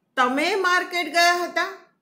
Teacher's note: હું તમે ઉપર ભાર મૂકીને બોલીશ